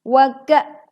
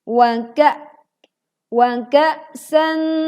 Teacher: Tekan suara pada saat kita membaca hamzah sukun setelah huruf kaf dibacakan. Wa ka, suara dan angin langsung tertahan.